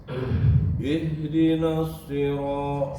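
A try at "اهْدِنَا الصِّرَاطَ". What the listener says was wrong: Ihdinas na itu huruf tipis, shad huruf tebal. Jadi jangan sampai terikut huruf nun ke huruf shad.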